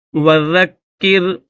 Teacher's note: بہ، با ہا زیر بہ، اتواصوا بہ بل ہم قوم طاغون فتول عنہم فما انت بملوم وذکر، ذال کو کاف کے ساتھ ملائیں گے کیونکہ کاف کے اوپر تشدید ہے اور نیچے زیر بھی ہے، تو تشدید کی وجہ سے ذال کو کاف کے ساتھ ملا کر پڑھیں گے